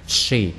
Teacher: She này là sờ dài, các bạn đọc như là sờ chim sẻ của tiếng Việt mình hả, cong lưỡi.